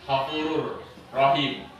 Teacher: Bukan hafurun, bukan. Hafurur rahim, seakan-akan dia bertasdid. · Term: idgham bilahuna